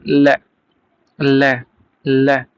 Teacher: इसमें मुख द्वार मध्य में बंद हो जाता है। हवा दोनों ओर से निकल जाती है। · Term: पार्श्विक वर्ण